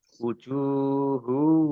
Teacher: Jim domah wawu sukun, mat tobi'i, panjang 2 harokat.